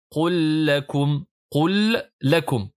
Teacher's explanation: Avec maintenant assimilation, vous avez qul lakum, qul lakum. Là, on assimile le lam avec la lettre lam. Ça donne qul lakum.